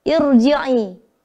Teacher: Irji'i, maka harus dibaca tebal ro-nya walaupun didahului dengan hamzah, ya, yang berharokat kasroh itu, tapi sebenarnya itu hamzah wasal, ya.